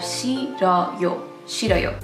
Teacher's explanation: The H is weakened and the 르 sound moves over to the second syllable